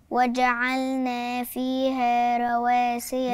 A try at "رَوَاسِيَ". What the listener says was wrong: تبقى هي مفخمه وانا اعملها حاجه ثانيه صح اعملها ايه فخمه ولا رقيقه الراء فخمه